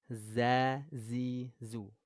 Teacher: Terus kalau Zai ujung lidahnya di gigi seri bawah